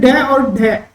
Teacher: जीभ की जो नौक होती है वो झटके से क्या होती है नीचे गिरती है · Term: उत्क्षिप्त